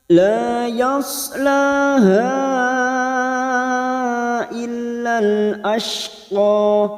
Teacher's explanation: La yas sad sukun yas la dua harakat. Laha ada mad yang bertemu dengan hamzah di lain kalimat namanya mad jaiz munfasil. 5 harakat kita panjangkan. Ha illal masuk dulu pada huruf lam yang bertasdid lal, lalu masuk ke alif lam qamariyah.